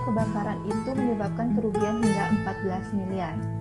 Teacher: tekanan, kuat lemahnya cara pengucapan kata atau kalimat, misalnya kebakaran itu menyebabkan kerugian hingga 14 miliar. Kata yang ditekankan di sini adalah kata 14 miliar.